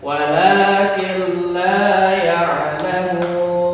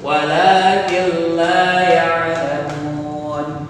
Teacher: Nun ini dilebur ke suara lam sehingga nun ini tidak terdengar. Dia leburnya sempurna, maka yang terdengar suara lam. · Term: idgham bila gunnah